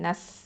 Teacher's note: அடுத்தது லாம் ஃபத்தா ல, நூன் ஃபத்தா, சீன் சுக்குன் நஸ். இங்கே ஹம்ச சிஃபத்தை கொடுக்கணும். நஸ், காற்று நல்லா வெளியேற்றணும்.